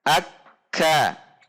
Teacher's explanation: saat tasydid, maka ada suara tertahan dan seperti terhenti sejenak. Akka, seperti terhenti sejenak.